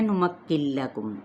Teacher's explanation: اب یہاں پہ نون ساکن کے بعد لام آ رہا ہے تو یہاں پہ ہوگا ادغام بلا غنہ، یعنی غنے کے بغیر ہم آگے بڑھیں گے